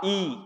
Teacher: जब आप ई बोलोगे तब आपको रियलाइज होगा कि जीभ के हमारे आगे का हिस्सा यूज हुआ। ई बोलने में तो छोटा ई और बड़ा ई दोनों इसमें आएंगे। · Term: अग्रस्वर